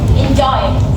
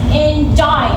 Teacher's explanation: We say EN is soft or unstressed. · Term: iambic